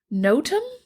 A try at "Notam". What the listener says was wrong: Well, you'd think it would be Notum, but it's no Tom. No, Tom. No Tom.